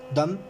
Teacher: Su abertura es semicerrada. Su localización vocálica es central y se trata de una vocal redondeada, lo que significa que los labios se abocinan.